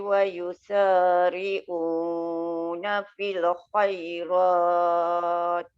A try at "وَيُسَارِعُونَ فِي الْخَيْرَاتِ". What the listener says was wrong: Jangan panjang sangat Wayusari'una fil tu terlebih. tu yang terpanjang tu.